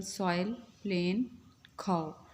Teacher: Diphthong is a combination of two vowel sounds or letters in a single syllable. The sound begins with one vowel and moves towards another.